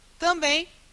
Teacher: Eu não escuto esse M. Esse M ele só está aqui para nasalizar. · Esse M ele só está aqui para nasalizar. Eu escuto o B, eu escuto o E e esse E também é nasal.